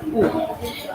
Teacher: जिन स्वरों का उच्चारण ओष्ठ से होता है उसे ओष्ठ स्वर कहते हैं